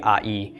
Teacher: it's called a diphthong. It's the combination of the short A with the Y of the Yod. Pronounced really quickly, I-E.